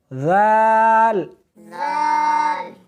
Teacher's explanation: ذال زال نہیں، سختی نہیں کرنی بلکہ نرمی کے ساتھ پڑھنا ہے